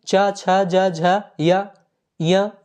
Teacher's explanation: च, छ, ज, झ, य, ञ ये सभी दोस्तों तालु के अंतर्गत आते हैं।